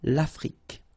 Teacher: Final E, it's only the K at the end that you will hear.